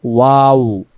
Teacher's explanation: এটা ঠোঁট থেকে আদায় হয় এজন্য এ অক্ষরের মাখরাজটা আমরা দুই ঠোঁটের মাঝখানের ফাঁকা অংশ থেকে পড়তে হয় · যখন আমরা ওয়াও অক্ষর পড়তেছি, কোনো জিহ্বা লাগে না, দাঁতের কোনো অংশ লাগে না, এটা ঠোঁট থেকে আদায় হয়।